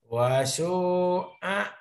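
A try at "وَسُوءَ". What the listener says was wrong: Ada tasdid tuh, Pak. Wassu. Wassu. Nyamber.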